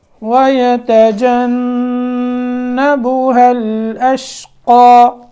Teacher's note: نون کے اندر غنہ کرنا ہے، ٹھیک ہے۔ الاشقا، یہ یہاں وقف کریں گے تو یہ جو زبر ہے اس کو کھڑی زبر میں پڑھیں گے، الف کی مقدار کے برابر اس کو، یعنی لمبا کریں گے 2 حرکتوں کے برابر۔